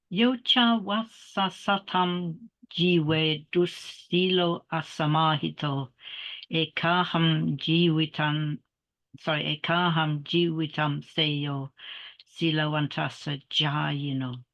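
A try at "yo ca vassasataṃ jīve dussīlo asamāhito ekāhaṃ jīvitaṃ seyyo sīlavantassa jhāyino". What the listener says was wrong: Okay, very nice. And I noticed you were pronouncing it in slightly more of a Thai way, which is fine.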